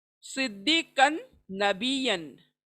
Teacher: सी स्वाद मोटा होगा, पुर पड़ा जाएगा